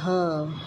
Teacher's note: अंतः मुखी व्यंजन। जिस व्यंजन का उच्चारण मुख के आंतरिक भाग अर्थात स्वर यंत्र इंग्लिश में इसे कहते हैं लेरिंग्स से हो उसे अंतर्मुखी व्यंजन कहते हैं।